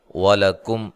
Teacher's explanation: لام کو باریک، کاف کو باریک، میم ساکن کا اظہار ہے